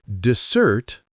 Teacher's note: Dessert, with the stress on the second syllable